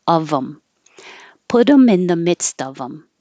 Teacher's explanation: This is another like H deletion, but it can happen with the them. Take off the TH and connect the consonant before. And in this case, it looks like OF, but it sounds like UV, of.